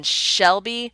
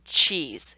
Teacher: When you roll to that SH and CH sound, your tongue is moving backwards to produce that. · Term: palatal